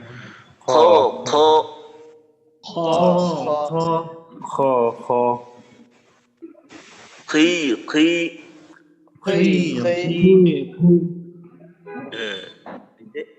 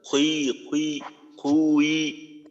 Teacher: মোটা করে মোটা করে ঠোঁট গোল না করে করবো মোটা হবে কিন্তু ঠোঁট গোল হবে না